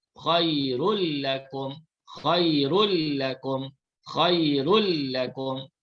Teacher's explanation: Cara bacaannya ialah bunyi tanwin dimasukkan ke dalam lam tanpa didengungkan. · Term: idgham bila gunnah